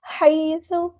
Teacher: یا ساکن سے پہلے زبر ہے تو مدلین ہو رہی نرمی سے بولنا ہے۔